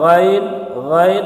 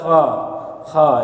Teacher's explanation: ghain Kha itu dari ujung kerongkongan